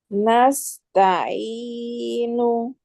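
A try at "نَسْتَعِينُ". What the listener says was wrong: ainnya lebih dalam lagi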